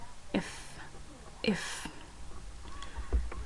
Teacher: va a ser labio dental cuando se une el labio inferior con la punta de los dientes superiores